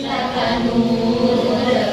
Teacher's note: yang terakhir itu panjang 2 alif karena mad alif sukun.